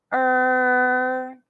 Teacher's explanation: curl the tongue further back and held it high